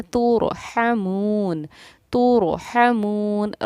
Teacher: ہا کی ادائیگی کو حلق سے ہمیں ظاہر کرنا ہے